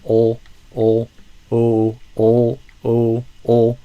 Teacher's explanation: I think I'm hearing more of a O, a vowel kind of O instead of a ol. That dark L, tongue retraction toward the throat. Lips neutral, not a bikini. So instead of O, I'm looking for ol, ol, o, ol, o, ol.